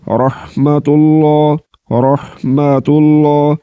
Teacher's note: اس ہا کا مخرج حلق کا درمیان والا حصہ ہے